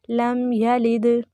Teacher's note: लम यलिद दाल पे कलकला करेंगे